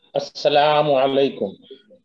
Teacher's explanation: very good, کیونکہ اس میں دیکھیے پہلے سین مشدد ہے تو اس کو ہم نے زور دے کے پڑھنا ہے